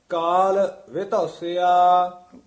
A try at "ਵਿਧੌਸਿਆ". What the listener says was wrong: ਵਿਧੌਸਿਆ, ਵਿਧੌਸਿਆ ਉਚਾਰਨ ਕਰਨਾ। ਵਿਧੂਸਿਆ ਨਹੀਂ ਕਹਿਣਾ, ਵਾਵੇ ਤੋਂ ਚੱਕ ਕੇ ਵਿਧੌਸਿਆ ਇਕੱਠਾ ਪਾਠ ਵਿਧੌਸਿਆ।